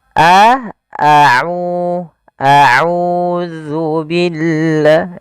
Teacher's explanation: Kemudian lafal a'u di sini ada hukum tajwid berupa mad tabi'i, yaitu adanya dhammah bertemu dengan huruf waw. Maka kita panjangkan a'u-nya 2 harakat.